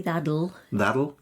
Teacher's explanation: the T changes sometimes to a bit of a D